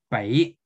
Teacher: It is not voiced and it has very little aspiration